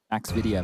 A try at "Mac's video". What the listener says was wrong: Mac. Sometimes you say Max video, and I.